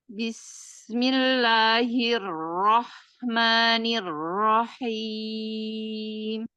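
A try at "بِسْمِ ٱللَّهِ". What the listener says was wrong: Di kata bisnya itu terlalu melebihi dari rokawa berarti ya. Agak terlalu lama. Bismillahi. Bismillahi.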